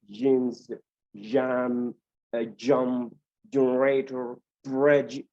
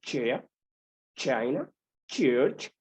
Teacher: these sounds are known as the palato-alveolar affricative